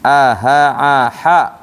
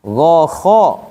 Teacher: Huruf yang A namanya huruf tipis. Huruf yang O namanya huruf tebal.